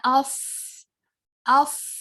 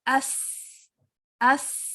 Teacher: सौद और सीन का मखरज एक ही है, सौद सिर्फ हैवी है और सीन जो है वो लाइट लेटर है।